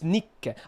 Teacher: You don't do the consonant pause, which you should do when there's a double consonant.